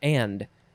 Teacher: And what I find interesting is the pronunciation guide says that the and word is just un or an. There's no D sound in there